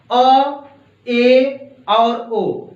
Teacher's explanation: इनका यदि आप उच्चारण करेंगे तो आपका जो मुख होगा वह आधे से कम खुलेगा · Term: अर्ध समृद्ध स्वर